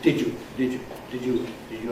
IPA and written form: ˋdɪʤu (did you)